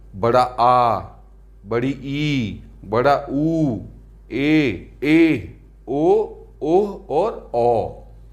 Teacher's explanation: इनके उच्चारण में ह्रस्व स्वर की अपेक्षा 2 गुना समय लगता है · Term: दीर्घ स्वर